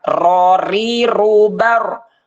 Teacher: ro yaitu makhrajnya di thful lisan di ujung lidah · seakan-akan ro itu berada di punggung lidah jadi ke atas dikit gitu tuh dari ujung mundur sedikit tapi yang atasnya di punggungnya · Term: inhiraf